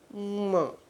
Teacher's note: મ નાકમાંથી પણ અને હોઠ ઉપરથી પણ